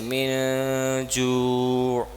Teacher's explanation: ناک کے اندر پاز little for a little while, ناک کے اندر ہم جو ہے آواز کو بند کر دیں تھوڑا سا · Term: اخفاء